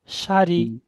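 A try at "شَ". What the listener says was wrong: সরি না শিন জবরশা হচ্ছে সাটা মনে রাখবেন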